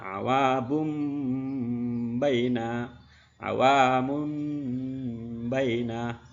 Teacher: iqlab mengubah suara n menjadi suara M · Iklab mengubah suara N menjadi suara M. Atau iklab nun sukun atau tanwin bertemu dengan huruf iklab yaitu huruf ba.